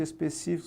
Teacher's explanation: aqui ó de trás para frente específicos você vai contar específicos sílaba tônica que é a anti penúltima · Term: proparoxitona